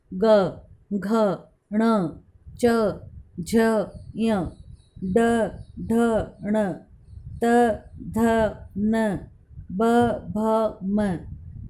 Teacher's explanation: जिन ध्वनियों का उच्चारण स्वर तंत्रियों में कंपन के साथ होता है उनको सघोष व्यंजन कहते हैं